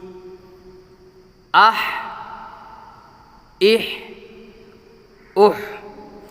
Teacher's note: اس کی آواز حلق سے نکلتی ہے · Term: بڑا ہا